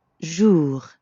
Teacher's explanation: the R at the end of jour doesn't really sound like an English R. You should feel that R in your throat. Jour. Yeah, almost like you're gargling or clearing your throat.